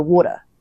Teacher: So you either say like a hard t like a t or like you miss the tea completely. But Americans and Canadians go water with like the D sound.